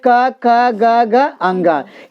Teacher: यानी कवर्ग का उच्चारण स्थान क्या होता है? कंठ होता है ना।